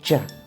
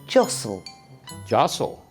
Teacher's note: The word starts with j, jostle. So it's a d and j sound together, j. And the letter T is silent.